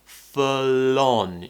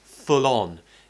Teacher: Remember to connect your speech here. Full on. You can join the L to the O. Full on. Makes it sound better and it will make you sound more natural with your pronunciation.